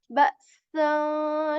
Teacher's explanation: the s sound of English with a bit more of like air